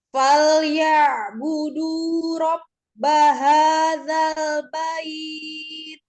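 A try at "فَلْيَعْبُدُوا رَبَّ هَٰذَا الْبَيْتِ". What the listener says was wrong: Nah, lagi alhamsnya. Falyabudu rabba hadzal bait. Bait. Bait. Ya, sukunkan dulu. Ketika tak sukun berarti letakkan di makhrajnya. Ujung lidah ada di pangkal gigi seri atas ya, saya. Bait.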